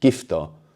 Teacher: So we write gto but here the U gets swallowed up making the word sound more English.